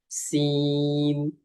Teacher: জিহ্বার আগা সামনের নিচের দুই দাঁতের পেট ও আগার সঙ্গে লাগিয়ে উচ্চারিত হয় সিন।